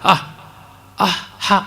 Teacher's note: ಅಕಾರವನ್ನು ಹೇಳುವಂತೆಯೇ ಮಹಾಪ್ರಾಣವಾಗಿ ಅಕಾರ ಹೇಳಿದಾಗ ಹಕಾರ ಆಗಿಬಿಡುತ್ತೆ ನೋಡಿ. ಹ ಅಂತನ್ನುವಲ್ಲಿ ಹೆಚ್ಚಿನ ಪ್ರಯತ್ನಾಧಿಕ್ಯ, ಉಸಿರು ಜಾಸ್ತಿ ಬೇಕಾಗುತ್ತದೆ.